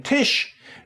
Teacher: you watch a german speaker saying tish you'll often notice that even the initial t gets some rounding